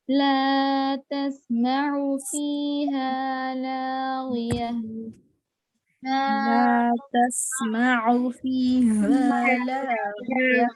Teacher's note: عین پہ دیکھیے حرکت ہے آپ لوگ او کھینچ رہے ہیں حرکت کو ہرگز نہیں کھینچیں گے